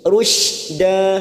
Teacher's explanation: Ulimta rusyda, rusyda shin sukun, rusyda da fathah tanwin yang dibaca waqaf, kita panjangkan 2 harokat, namanya bacaan mat iwad. Ini juga cabang dari mat tabi'i, namanya mat iwad, 2 harokat kita panjangkan.